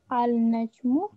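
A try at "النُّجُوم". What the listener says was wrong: An-najmu, lam is silent. An-nujumu.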